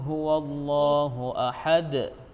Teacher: ini seluruh ayatnya ditutup dengan Qalqalah Kubro ya jadi pantulan Oke huruf Dal nya yang di akhir itu harus terdengar jelas